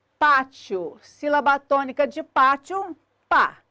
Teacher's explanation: sílaba tônica de pátio, pá, penúltima, paroxítona acentuada por terminar em ditongo crescente IO.